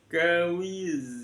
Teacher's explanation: Wa wada'na an, di sana ada nun sukun bertemu dengan kaf, dibaca ikhfa. ikhfa hakiki ditaruh di tengah-tengah antara nun sama kaf, maka berbunyi dalam bahasa Indonesia seperti bunyi ng